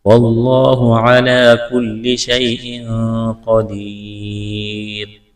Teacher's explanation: کل لام میں سختی کریں گے، شیء یا ساکن سے پہلے زبر ہے، یا لین ہے، کھینچنا نہیں ہے۔ تنوین کے بعد قاف ہے، یہاں پر اخفا کریں گے، آواز ناک میں چھپائیں گے، قاف کو موٹا کرنا ہے، یا ساکن سے پہلے زیر ہے، یا مدہ ہے کہ الف کے برابر کھینچنا ہے، وقف کریں گے، را کو ساکن کریں گے۔